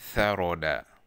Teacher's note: tha, est prononcée lorsque la langue est entre les incisives supérieures et inférieures